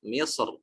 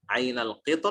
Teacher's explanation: maka misr roknya tebal. Adapun ainal qitr roknya dibaca tipis, memilih untuk membaca tipis karena roknya berharokat kasroh asalnya.